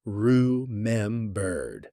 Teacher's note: This word is a great one for practicing linking and reduced syllables. In fast American speech, remembered often gets compressed. The middle syllables blur together.